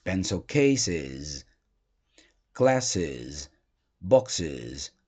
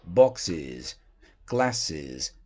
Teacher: Não é o som de Z só, é de is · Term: som de is